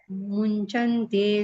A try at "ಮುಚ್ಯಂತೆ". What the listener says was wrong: ಮುಂಚಂತೆ ಅಲ್ಲ, ಮುಚ್ಚಂತೆ. ಮೂ ಮುಂದೆ ಇದಿಲ್ಲ ಅನುಸ್ವರ, ಚ ಮುಂದೆ ಇದೆ. ಮುಚ್ಚಂತೆ.